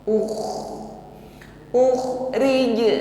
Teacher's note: ketika sukun khnya bunyinya masih ngalir ya dengkurnya itu ngalir karena sifatnya rakhwa